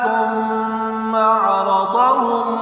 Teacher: ثم میم مشدد ہے، یہاں پر غنہ کرنا ہے